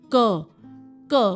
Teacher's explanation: जाता है अंदर हमारा माउथ के तो that is soft palate the sounds which are produced by raising the back of the tongue जो हमारी जीभ का पिछला हिस्सा है अगर वो ऊपर आएगा · जीभ का जो आखिरी हिस्सा है वो आपका सॉफ्ट पैलेट में जा रहा है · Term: वेलर साउंड्स